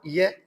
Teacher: य इसका उच्चारण होता तालू से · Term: अर्ध स्वर